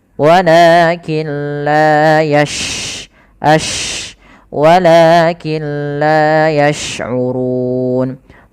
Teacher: sifat tafasyi, yaitu intisarus saut fil fam, menyebarnya suara kita di dalam mulut